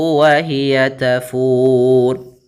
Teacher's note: Nah, untuk panjang fu sendiri karena dia bertemu dengan huruf wat dan huruf yang dimatikan, maka kita boleh baca di sini dua harakat, boleh pula empat harakat dan boleh pula enam harakat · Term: sukun arid